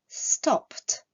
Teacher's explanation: Le verbe stop se terminant par un son sourd, la terminaison ed se prononcera t